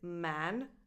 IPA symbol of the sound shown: æ